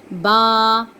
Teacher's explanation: با، بند ہونٹوں کے گیلے حصے سے۔